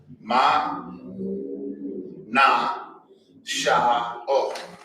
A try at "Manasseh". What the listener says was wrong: That H has a sound. Right. It's there. It's not silent. It's not, it's really, it's Manasseh. Manasseh. Like a little huh. There, little Manasseh. It's sad because we're not used to it. It almost sounds silent, but it's there.